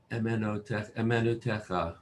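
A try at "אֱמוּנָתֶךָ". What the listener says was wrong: Hey, what's that after the mem? Emunatecha.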